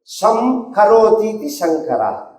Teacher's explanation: ஷன்னு அடி நாக்குனாலையும் சொல்லக்கூடாது. ஷ நடு நாக்குனால சொல்லணும்.